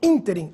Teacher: o intervalo de tempo é interim é uma palavra proparoxítona